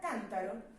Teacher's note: En la palabra cántaro tenemos que can es donde recae la mayor entonación